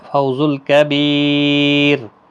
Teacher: سے پڑھیں، فو واولین ہے اور کبیر بی یا مدہ ہے، اور را ساکن جب ہوگا تو باریک پڑھا جائے گا ، فوز الکبیر، کیونکہ را ساکن سے پہلے جب یا ساکن